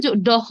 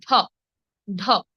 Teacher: একটু ডহ নয়, হ্যাঁ ডহ হবে না, এটা হবে ঢ, ঢ। বেশি পরিমাণে বাতাস নির্গত হয়ে উচ্চারিত হবে ঢ। ডহ কিন্তু নয়, ঢ।